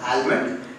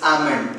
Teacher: The letter L is silent here.